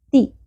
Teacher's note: تا باریک ہوگا، شارٹ ہوگی زیر